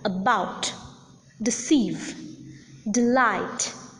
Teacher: not accented for instance in the words like about deceive delight the second syllable is accented the first syllable is unaccented unstressed